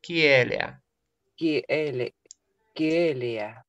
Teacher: Да, только не е, а э. Ки-э. И переходит в э.